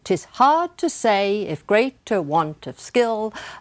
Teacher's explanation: what we hear is the stress falling in the first line on the phrase want of skill,